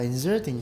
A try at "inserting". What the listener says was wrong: Inserting. No, it's not Z, it's S.